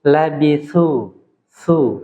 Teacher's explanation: huruf ta itu huruf yang istifal huruf yang ringan Jadi enggak boleh labitu labitu tapi labitu tu tipis saja Ma